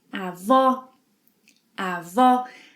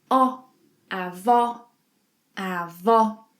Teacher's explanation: Avó has an open O sound.